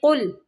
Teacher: قاف کو موٹا پڑھیں گے اور لام کو قلقلہ نہیں کریں گے